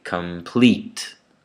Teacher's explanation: Again in complete, two vowels, two syllables there. The first one is unstressed, the second one is stressed, so there's an accent on it.